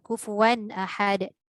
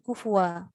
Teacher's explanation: tanwin itu ada ketika wasal tapi tiada ketika waqaf